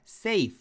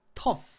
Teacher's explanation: F하고 발음할 적에는 요 목에 성대, 목젖이 떨리질 않습니다